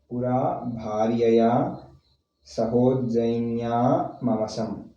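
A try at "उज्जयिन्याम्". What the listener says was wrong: Ujjainya. Ujjainya mavasam. How do you split it? Read together. You can't split it anywhere just like that. Where there is no word. Pura bharyaya sahojjainyam.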